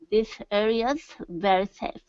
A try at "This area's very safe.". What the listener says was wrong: Yeah, put an emphasis on it. Okay, if not, it was very, very quiet, and really what I was hearing was this area very safe. Okay, so make that S jump out so I can hear the verb to be.